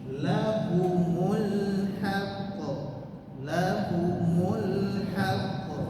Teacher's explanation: enggak ada qalqalahnya lagi karena bertemu dengan qf yang ada qalqalah yang kedua. Jadi ada sikit jeda ya.